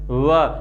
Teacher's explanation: व के योग में आप देखेंगे कि जीभ जो है वो नीचे के जो दांत है, नीचे के जबड़े के जो दांत हैं, इन दांतों को आगे बढ़कर टच कर रही है व, और जो होठ है वो होठ गोलाकार रूप ले लेते हैं। तो जीभ दांतों का स्पर्श कर लेती है, होठ गोल हो जाते हैं, ध्वनि को आकार देते हैं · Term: दंतोष्ठीय ध्वनि